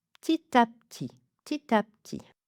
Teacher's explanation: Vraiment, la clé, j'ai l'impression, est de fermer les lèvres comme si vous comme si vous alliez prononcer le P, mais de ne pas le prononcer